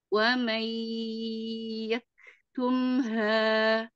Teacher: wa mai lebih dimasukkan ke hidung lagi